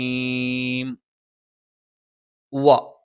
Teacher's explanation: രണ്ടു ചുണ്ടും വൃത്താകൃതിയിൽ വെച്ചുകൊണ്ടാണ് വശംസുഷ നാവിന്റെ മധ്യഭാഗം മേലെണ് അണ്ണാക്കിലാണ് നാവിന്റെ മധ്യഭാഗം മേലെ അണ്ണാക്കിൽ എന്ന് നമ്മൾ